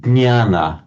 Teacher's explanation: the Marathi speakers are the only ones I know of who retain the authentic old Sanskrit pronunciation of that ñ sound